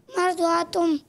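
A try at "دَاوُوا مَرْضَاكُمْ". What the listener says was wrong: मरदातुम नहीं, कुम कुम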